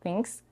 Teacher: she is devoicing the Z to S